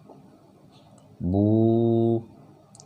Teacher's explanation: Di sini dia mengajarkan tentang waw sukun atau waw mati yang bunyinya adalah u, sama dengan u. Ketika huruf hijaiyah, apapun itu huruf hijaiyahnya, bertemu dengan waw mati seperti ini dan tanda bacanya dhammah, dia dibaca bu tapi dipanjangkan. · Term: mad tabi'i waw